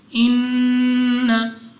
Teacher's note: नून मुशद्दद गुन्ना करके पढ़ेंगे इन्न, उसके बाद या साकिन से पहले ज़ेर या मद्दा 2 सेकंड तक लंबा करना है।